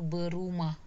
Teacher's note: Fonem R yang di afiksnya hilang menjadi kata berumah.